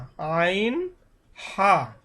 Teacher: হলকের মধ্যখান হইতে আইন হা